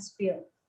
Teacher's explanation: Meanwhile, the p sound in spill isn't accompanied by an aspiration.